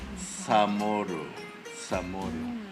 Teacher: In Chamorro, it's more of a ts